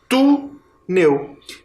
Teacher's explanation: Termina em L, mas agora a sílaba tônica é a penúltima, ela é paroxítona